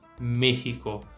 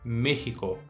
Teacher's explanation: se tem a tilde não importa a gente tem que manter esse som de e fechado